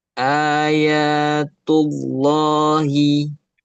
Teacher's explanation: Ayatullahi yang tebal lamnya